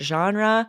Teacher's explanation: we're still anglicizing right the word genre we're still sort of saying the r like we say in the states and French would be with that R in the